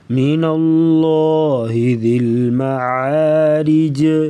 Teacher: معارج وقفاً جو ہے جیم ساکن ہوگی، یہاں پر کلکلا کر کے پڑھیں گے، یعنی آواز کو ہلانا. من اللہ ذی المعارج، را کے نیچے زیر تو را کو بریک پڑھیں گے.